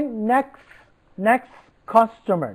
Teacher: we do not pronounce t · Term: elision